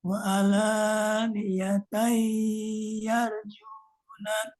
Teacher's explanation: Waktu di situ idgham bigunahnya ditahan 3 harokat aja.